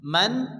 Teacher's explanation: আলিফ টেনে পড়তে হবে আম্মা মানত নুন সেকেন্ডের পরে ইজারে হালকিন হামজা আসছে কোন গুন্না হবে না বিনা গুন্না তাড়াতাড়ি পড়তে হবে মান আইন সাকিন আইনকে হামজার ভালো করে উচ্চারণ করে পড়তে হবে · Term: ইজহারে হালকির